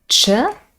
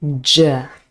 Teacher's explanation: the first sound ch is unvoiced and the second one je is voiced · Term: affricate sounds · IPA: tʃ & dʒ